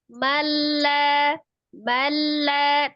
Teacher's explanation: Jadi nunnya seolah tidak ada ya. Diabaikan nunnya.